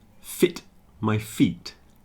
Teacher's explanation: Fit is short and feet is longer. Just like sit on a seat.